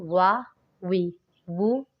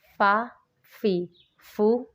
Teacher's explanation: اس میں واؤ اور فا میں فرق کرنا ہے، واؤ کو ہونٹ گول کر کے اور فا کو اوپر والے دانت نیچے لگا کے